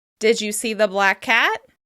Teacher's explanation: We're using the /k/ sound to link between the words.